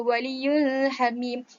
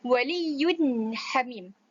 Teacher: kita harus baca secara izhar, secara jelas, izhar halqi, dan kita tidak boleh dengung